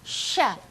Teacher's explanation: kalau bisa kita bilang sha-nya lebih berobos udaranya ya. Jadi sha, ada udara yang meluas di dalam mulut kita.